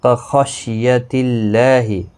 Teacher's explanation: خا مستعلیہ ہے، پر پڑھا جائے گا۔